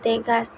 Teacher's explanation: belakang yang kedua vokal Tengah contohnya e seperti pada kata tegas diucapkan di tengah suku kata tidak bertekanan lidah berada di tengah tidak terlalu depan atau belakang